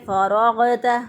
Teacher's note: غین بھی موٹا حرف ہے اور را بھی موٹا حرف ہے، تو دونوں کو پر پڑھیں گے فراغت، تا باریک ہے، تا کو باریک ادا کریں گے فراغت